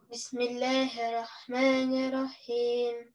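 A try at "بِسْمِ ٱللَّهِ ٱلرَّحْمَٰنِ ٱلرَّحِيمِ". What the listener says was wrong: Удвоение тоже не теряем ни рахмани, а бисмиллахи рахмани. Две ра. Нет, все равно не было две. Бисмиллахи, ну, я преувеличу. Бисмиллахи рахмани. Как бы вот две должно быть, а не одна.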